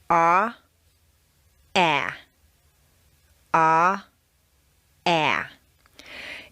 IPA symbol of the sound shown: æ